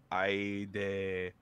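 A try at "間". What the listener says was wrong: Now, there's only one thing that you messed up there, but you did like the grammar was perfect. This is aida. Yeah, I think you said aide, if I'm not mistaken.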